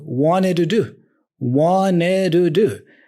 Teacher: the to is also reduced to a do